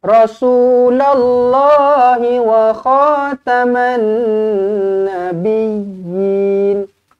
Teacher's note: alif lam syamsiah masukkan terus dekat Nun sabdu dengungkan nabiin tekankan ya ada sabdu kemudian Yin dibaca dengan dua harakat